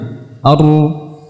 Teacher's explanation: lidah pada saat ra yang tebal dia menjadi kaku karena ujungnya naik pangkalnya juga naik sehingga terjadi takaur di bagian cekungan di bagian tengah lidah ya